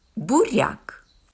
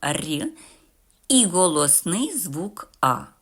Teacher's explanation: в цьому слові буква я позначає м'якість попереднього приголосного р Тобто ми його читаємо р і голосний звук а а в